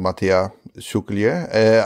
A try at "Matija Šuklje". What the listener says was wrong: It was close enough. You could just drop the J. So Matija Šuklje is how you probably pronounce it.